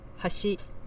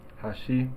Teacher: the second syllable is a little bit higher than the first but to me it doesn't sound like it's quite as big